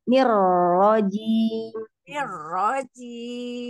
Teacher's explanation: Hati-hati, jangan nirrojim. Jadi ni-nya jangan diseret, nanti tamtik. Lebih cepat.